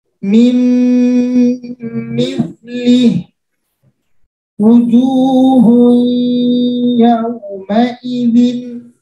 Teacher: maka cara membacanya memasukkan dengan disertai dengung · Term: idgham bi gunnah